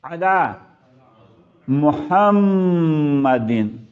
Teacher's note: اس میں بھی غور رکھنا ہے کہ عین جو ہے وہ مخرج اس کا حلق ہے